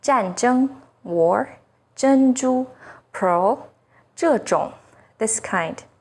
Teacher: ZH sounds like the first sound in jerky, with the tip of the tongue raised against the hard palate.